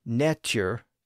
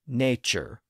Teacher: the T sound tended to become a CH sound